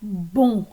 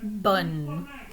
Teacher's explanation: you should feel some sound waves or kind of vocal vibrations traveling through your nose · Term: nasal vowel sound